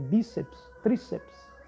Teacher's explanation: Você tem bíceps, você tem, então, uma paroxítona, você tem a sílaba mais forte, a penúltima posição